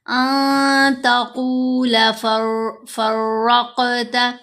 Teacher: ان تقول فرقت، ان نہیں ہم نے پڑھا کیونکہ نون ساکن کے بعد تا ہے اور تا حروف اخفا میں سے ہے، یہاں ہم نے نون کی آواز کو ناک میں چھپا کر پڑھنا ہے کیونکہ یہاں پر اخفا ہوگا۔